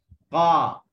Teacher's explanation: Okey, qala tak ada angin, jahar.